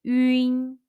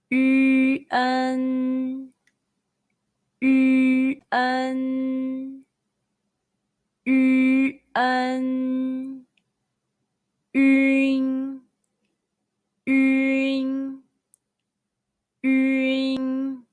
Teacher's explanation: Say 晕. First, pucker your lips to pronounce yu, then immediately follow by in, as in the English word in · Your lips are rounded first, then end with somewhat flat. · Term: final 晕